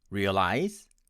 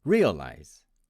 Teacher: My friends from India tend to pronounce it as realize, with stress on the second syllable. And my American friends would pronounce it as realize, with stress on the first syllable.